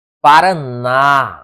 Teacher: Paraná, a sílaba tônica é a última, portanto, uma oxítona